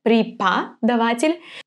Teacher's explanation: The O, we know that it's going to be read as A because it's unstressed